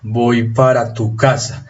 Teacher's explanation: Pero en general aplicamos fuerza acá y aplicamos fuerza acá y estas dos palabras las pronunciamos sin acento. Así que voy y casa son palabras tónicas, o sea, las pronunciamos con acento, mientras que para y tú son palabras átonas, las pronunciamos sin acento.